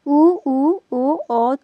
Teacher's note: वृत्ताकार से तात्पर्य इनकी उच्चारण करते समय हमारी मुंह की आकृति कैसी हो जाएगी? गोल हो जाएगी।